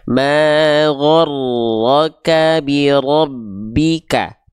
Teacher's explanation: Takrir itu artinya dia bergetar, namun bukan dengan getaran yang terlampau berlebihan.